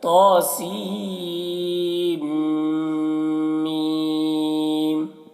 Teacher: سین کو بلا نون کے میم میں ملا کر غنہ کے ساتھ